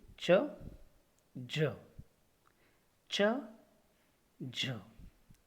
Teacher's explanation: The air passage in the mouth is completely closed by contact of the tip and blade of the tongue. The air is released with the friction.